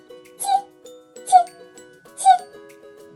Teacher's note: кінчик язика опущений донизу а спинка язика вигнута круглою гіркою і торкається альвеол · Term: звук ці